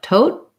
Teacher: The first T, tote, has a puff of air. The last T is unreleased. So it'll sound like tote.